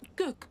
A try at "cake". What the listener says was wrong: Non, pas coke. Cake.